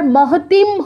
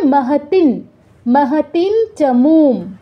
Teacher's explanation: তো চ বর্গের আগে হচ্ছে অনুস্বারটা বসেছে, তার মানে অনুস্বারের জায়গায় চ বর্গের অনুনাসিক ধ্বনির অর্ধ উচ্চারণ হবে। এখন চ বর্গের অনুনাসিক ধ্বনি কী ছিল?